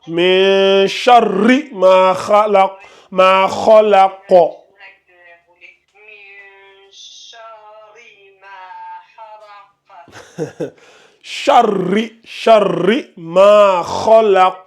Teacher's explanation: vu que le ra ici porte un shadda, ça doit donner char et ri.